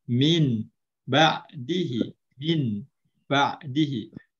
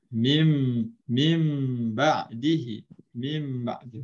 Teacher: So mesti bunyi mim lah, tidak boleh bunyi nun dah.